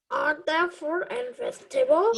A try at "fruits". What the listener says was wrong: There's S. You have to pronounce every word that is.